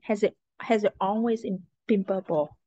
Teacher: gave a dramatic pause after saying it, and put a lot of emphasis on always.